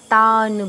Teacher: ন এর নিচে হসন্ত আছে। আমি তাই নটা পুরোপুরি বলছি না। তান বলছি। আর তাতে দীর্ঘ হবে।